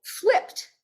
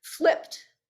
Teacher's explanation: So that ED on the end sounds like t.